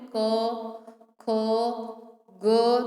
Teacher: तो हमारी जिह्वा है वो हमारे कंठ से स्पर्श करती है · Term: क वर्ग